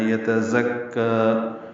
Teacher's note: یتزکا، یا تا جلدی پڑھیں گے، زا تیز صفیر کی آواز سے ادا کریں گے، زا کو کاف سے ملانا ہے، کاف پر کھڑا زبر ہے، 2 حرکات لمبا کرنا ہے.